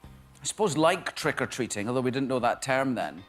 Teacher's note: The O sound as well is quite different in his accent. It's elongated and it's more at the front of the mouth.